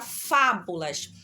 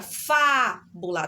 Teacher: Observe aqui um fa é a sílaba mais forte tá bom é a sílaba mais duradoura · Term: sílaba tônica